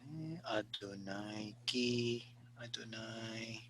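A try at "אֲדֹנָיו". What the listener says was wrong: Adonai, but Adonav. You see that spell?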